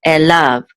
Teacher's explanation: So this is lav, okay, and this is the accent or trope mark, tipcha, right here, this curly thing. And so the accent's on the last syllable